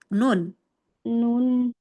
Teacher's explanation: tengah lidah bertemu dengan gusi atas